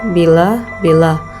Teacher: Bunyi vokal. Bunyi I, ciri-ciri tinggi depan tak bulat.